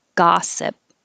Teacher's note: gossip looks like an o but sounds like ah